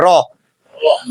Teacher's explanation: রটা উচ্চারণ করতে গেলে আমাদের যে জিহবার অগ্রভাগ আছে ওটা কেপে ওঠে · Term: কম্পন ধ্বনি